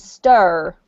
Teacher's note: stir with an American accent stir with an R on the end but the same vowel sounds